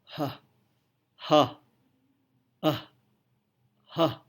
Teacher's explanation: pada saat kita mengucapkan ha, pita suara terbuka lebar, mulut terbuka lebar, lidah dalam posisi beristirahat, tidak ada hambatan udara sama sekali. Itulah yang disebut sebagai suara glottal.